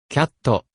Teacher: in order to make English words conform to Japanese syllable types so cat usually gets a vowel added at the end